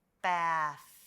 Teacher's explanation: th together makes the soft th sound the unvoiced sound · you're gonna push that air out from your mouth just like with the f you should feel some breath